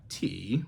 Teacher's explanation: so you've got T which means body that's a third tone third tone so it's the falling and up tone · 3rd tone, so it's the falling and up tone.